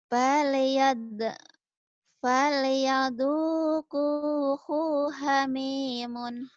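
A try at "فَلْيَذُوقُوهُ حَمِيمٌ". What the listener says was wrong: Hu-nya pendek. Falyadhuquhu hamimun.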